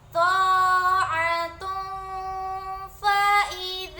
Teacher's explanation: bertemu dengan huruf Fa maka dia bacanya adalah samar dan disebut dengan Ikhfa dengung ada dengung-dengungnya